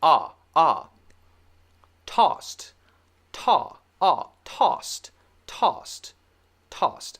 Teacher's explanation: it's actually the short o sound which is ah